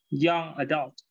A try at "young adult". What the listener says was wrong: Excellent. Perfect.